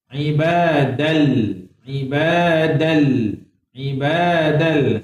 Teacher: Dal baris atas masuk terus kepada lam. Tapi dia masuk tak dengung. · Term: Idgham